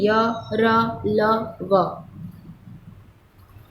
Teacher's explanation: इन वर्णों का उच्चारण स्वरों एवं व्यंजनों के बीच का सा होने के कारण इन्हें अंतःस्थ व्यंजन कहा जाता है। और इन व्यंजनों का उच्चारण करते समय जीभ मुंह के किसी भी भाग से पूरी तरह स्पर्श नहीं करती है